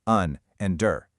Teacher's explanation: Those first two syllables, they're weak. They get that lazy schwa sound we just practiced.